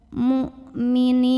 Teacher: Hamzah itu dari segi suara sifatnya syiddah, kuat bunyinya ya. Jadi makin ditekan makin enggak keluar bunyi.